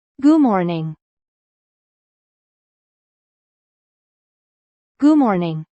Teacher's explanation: The final D becomes weak.